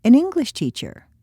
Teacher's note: This is a set phrase. The stress is on the subject being taught, not on the nationality of the teacher.